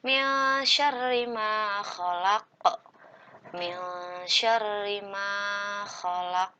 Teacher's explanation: Nah, di sini disebut dengan ikhfa, harus disamakan atau didengungkan dan nun sukunnya berubah menjadi eng